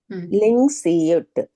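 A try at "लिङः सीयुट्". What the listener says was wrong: లింగ్ కాదు, లింగహ. లింగస్. లేదా లింగహ అని అంటే అప్పుడు సియుట్ ఒకటే చెప్తాము, లేకపోతే ఇక్కడ లింగ విసర్గ సకారం అయ్యింది అనమాట, అందుకే సగం సకారం ఉంది ఇక్కడ. లింగస్ సియుట్.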